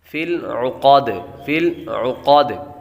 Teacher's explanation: لام باریک اور عین کی آواز نکالیں گے